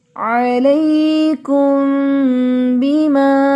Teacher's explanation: تو میم کی آواز کو ناک میں غنہ کرتے ہوئے چھپا کر پڑھیں گے